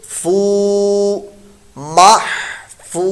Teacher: اور فو واو مدہ ہے، اس کو لمبا کرنا ہے